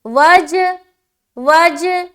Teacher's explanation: ایسا لگ رہا ہے نا کہ دو مرتبہ ادا ہو رہا ہے جیم، لیکن ہم یہاں پر اس طریقے سے کر رہے ہیں کہ ہماری آواز ڈبل معلوم ہو رہی ہے، تو اس طریقے سے ہمیں قلقلہ ادا کرنا ہے۔